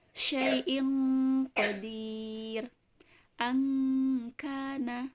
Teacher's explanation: Jadi kalau ada nun sukun atau tanwin bertemu dengan huruf qaf ataupun bertemu dengan huruf kaf, dia nun sukunnya kedengarannya cenderung eng. Contohnya misalnya syai'in qadir, angkana, seperti itu. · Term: ikhfa abad